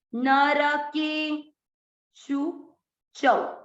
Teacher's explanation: अवग्रह आ गया, के को लंबा खींचे, नरके शु चौ, शु को लंबा नहीं खींचना।